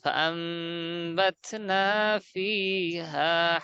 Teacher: নুন সাকিনের পর যদি বা আসে, তাহলে উক্ত নুন সাকিনের মাঝে লুকায়িত নুনকে মিম দ্বারা পরিবর্তন করে পড়তে হয়। একটু বড় করে- এই তো দেখেন, নুন সাকিনের পরে বা এসেছে, তাহলে হামজা নুন জবর আন, বাত না, আন বাত না হওয়ার কথা, অথচ আমরা করতেছি কি ওই আন ন, ওই নুনটাকে মিম দ্বারা পরিবর্তন করতেছি, মিম বানিয়ে দিয়েছে।